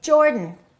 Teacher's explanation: reduce that a and say Jordan